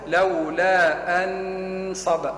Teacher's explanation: أن نون مظهرة، ملصق لسانك عند اللثة فوق